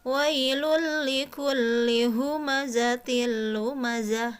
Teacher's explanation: sini ada tanwin bertemu dengan huruf lam ya di sini sama bunyi n pada tanwinnya itu dibuang kemudian langsung masuk kepada huruf ingat ya tanpa disertai gunnah jadi biasa aja mengalir langsung ya Woi lu likulli humazatil lumazah